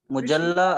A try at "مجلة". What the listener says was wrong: Majalla, majalla. In Urdu, we read with dhamma, but in Arabic, it's with fatha. Majallati That's right, yeah. But in Arabic, it will be maftuh with fatha.